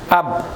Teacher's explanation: এই যে যদি আমরা কি করি, এভাবে উচ্চারণ করি, তাহলে এখানে কি বলা হচ্ছিল যে সাকিন হরফটির আওয়াজ যে স্থানে গিয়ে থেমে যায়, তাহলে আমাদের আব, এই আওয়াজটা আমাদের থামতেছে কোথায় গিয়ে? দুই ঠোঁটে এসে থেমে গেছে।